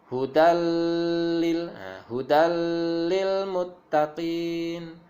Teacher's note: ada fathah tanwin bertemu dengan lam, maka dia akan masuk kepada huruf lam dan tidak berdengung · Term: idgham bila gunnah